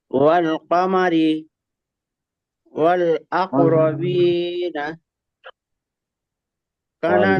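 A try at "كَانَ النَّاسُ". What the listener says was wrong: কা টান দেন, কানান নাসু।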